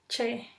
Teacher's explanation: Sucede una pequeña abertura por donde se desliza el aire contenido en el primer momento del cierre, percibiéndose claramente una fricción. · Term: sonido africado